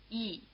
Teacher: It's written yi, but you can't always hear the y as a separate sound.